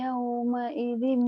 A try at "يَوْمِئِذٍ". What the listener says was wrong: Yaumi, yaumi, yaumi bukan yauma. Yaumi, memang biasanya yauma di sini.